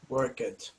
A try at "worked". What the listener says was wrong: So a lot of Brazilian people say work it, but it's pronounced worked. Worked. Yes, you write it like this, Worked, but it's pronounced like this. It's pronounced like worked, worked. It's pronounced like worked, like this one, but you write it like this.